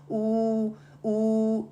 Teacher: آپ کھول کے دیکھیں، آپ پرناؤنس کر کے دیکھیں تو وہ سیدھا باہر آ جاتا ہے۔ اسی طرح او میں راؤنڈ لپس کرتی ہوں، اس کی وجہ سے میری زبان کی یہ نیچر آف دا مخرج ہے کہ پیچھے سافٹ پیلٹ کی طرف سے، جڑ کی طرف سے نا اوپر تھوڑا اٹھ جاتا ہے، ہیوی نہیں ہو رہا، جسٹ ویسی نیچر آف دا مخرج۔